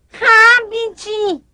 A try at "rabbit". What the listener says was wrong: Aqui é engraçado porque fala rabbit. Temos um erro aqui na questão da pronúncia, porque a pronúncia não necessariamente é habit, mas rabbit, rabbit. Todas as palavras que se iniciam com R no inglês, nós sempre vamos pronunciar com R lá para dentro. Então, rabbit, rabbit.